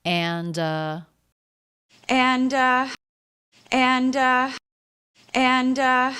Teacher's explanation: it's not that common to hear the d in the word and but she does do it